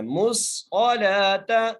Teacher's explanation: میم کو صاد سے ملانا ہے، اور صاد کو موٹا کر کے پڑھنا ہے ، مُصْقَلَاتَ، لام کے اوپر کھڑی زبر ہے، ایک الف کی